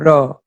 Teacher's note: র উচ্চারণ করার সময় আমরা জীবের ডগাকে কাঁপিয়ে উচ্চারণ করি বলে এটাকে বলা হয় কম্পনজাত ধ্বনি।